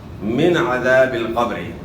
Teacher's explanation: یہاں نون ساکن کے بعد عین ہے، اور یہاں حروف حلقی آ گئی، من عذاب القبر، تو یہاں جو ہے نا اظہار ہوگا، یعنی غنہ نہیں ہوگا۔ من عذاب، عذاب نہیں پڑھنا، عذاب القبر، قبری نہیں پڑھنا، قبری۔